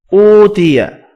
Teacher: اوتیا واو مدہ ہے ایک الف کی مقدار میں کھینچ کر پڑھیں گے